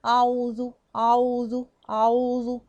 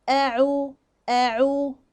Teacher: عندي ضم العين، وطبعا العين عندي ايضا مرققة. طيب اهم حاجة بقى هنا ان انا اعمل فاصل بين الهمزة وبين العين